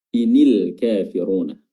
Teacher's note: huruf nun yang tadinya sukun ketika bertemu dengan lam yang sukun setelahnya, maka nunnya ini ditahrik atau diberikan harokat, dan yang harokat yang paling simpel adalah kasroh.